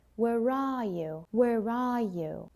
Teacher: What I would do is I will link with an R. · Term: linking R